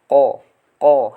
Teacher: huruf qaf itu lidah paling bawah menempel pada langit-langit. Jadi yang paling belakang ya.